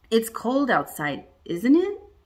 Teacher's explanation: we can use rising intonation on tag questions and that means we really want to know it's cold outside isn't it that goes up it's cold outside